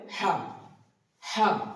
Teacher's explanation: কন্ঠনালিটির মাঝখানে উচ্চারিত হবে হা। হা একটা বাতাস বের হবে।